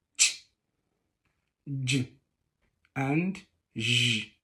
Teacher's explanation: In the course of production, the tongue and the area slightly behind the alveolar ridge are involved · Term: Palato-alveolar